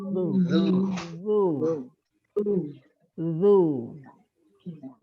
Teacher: ujung lidah dengan ujung gigi seri atas ya ditekan dan digesekkan